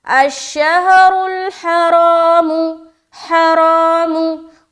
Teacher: पहली सूरत में रा के ऊपर पेश है और दूसरी सूरत में रा के ऊपर जबर है और साथ ही साथ अलिफ मद्दा भी हो रहा है। तो हमने खींचते हुए रा को मोटा रखा, एक अलिफ की मकदार जो हमने खींचा उसको मोटा रखते हुए खींचा। अशहरुल हरामु, हरामु, और हा को भी प्रॉपर निकालना है।